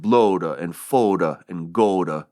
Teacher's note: Chaucer rhymed the words blood, food, and good, using probably a long O sound. So they would sound like bloda and foda and goda.